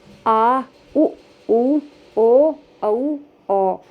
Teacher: जिन स्वरों के उच्चारण में जीभ का पश्च हिस्सा, पिछला हिस्सा काम में आता है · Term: पश्च स्वर